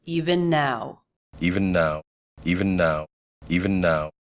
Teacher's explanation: his word is a little bit longer and his voice doesn't fall off and pitch he keeps it steady forward long again that makes it sound a little bit robotic it doesn't